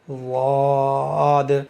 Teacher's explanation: یعنی موٹا کر کے پڑھیں گے منہ کے اندر ہوا بھر کے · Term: مستعلیہ